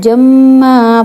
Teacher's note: دو زبر جہاں پہ ہو تو وہاں پہ ہم وقف کرتے ہوئے اس کا الف پڑھتے ہیں، ٹھیک ہے. ہم اس کو وقف کرتے ہوئے جما پڑھیں گے، ٹھیک ہے.